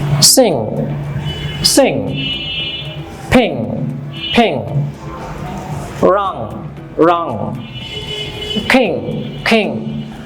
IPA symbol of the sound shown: ŋ